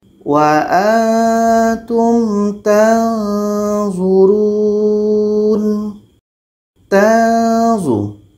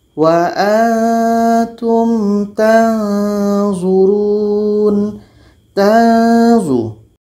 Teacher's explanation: Ketika sebut huruf nun, kita sudah merasakan huruf za. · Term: ikhfa hakiki